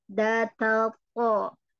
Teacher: punggung ujung lidah menyentuh pangkal gigi seri atas